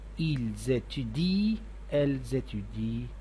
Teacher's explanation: Notice that we never pronounce the nt at the end of ent verbs. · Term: silent ending